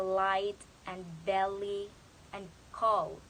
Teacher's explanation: the tip of the tongue touches the alveolar ridge, but the air actually escapes through the sides of the tongue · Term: lateral